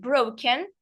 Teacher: the stress is on bro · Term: word stress